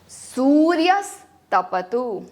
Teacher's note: तपतु में ह्रस्व होने के कारण सिर्फ उसके आधा समय उसे देंगे